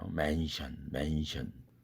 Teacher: 스가 반모음 이가 옴으로써 스가 맨시언이 아니라 맨션이 되어버렸어요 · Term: 국외음화